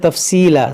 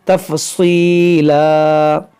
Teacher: بعض لوگ کیا پڑھتے ہیں تفصیلا، سین سے، تو سین نہیں ہے صاد ہے